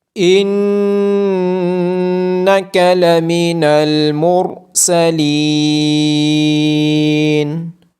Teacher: نون مشدد ہونے کی وجہ سے اس پہ غنہ ہوگا۔ را کی آواز موٹی آئے گی۔